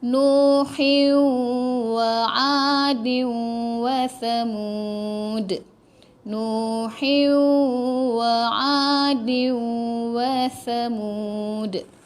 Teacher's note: Nuhi, tekan ha dulu tau, baru masuk waw.